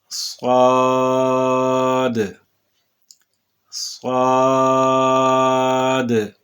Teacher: صاد یہ ہر حالت میں پر پڑھا جانے والا حرف ہے